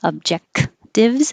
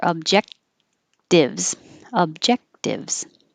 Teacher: you don't release the k